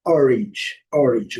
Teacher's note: O que interessa aqui é o A com som de I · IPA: /ɪ/